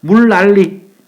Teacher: 뒤에 오는 리을 때문에 앞에 오는 니은이 리을로 바뀝니다. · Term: 역행 유음화